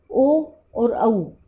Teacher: ओ और औ, दांत, जीभ और होंठों से इसका उच्चारण किया जाता है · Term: कंठोष्ठ्य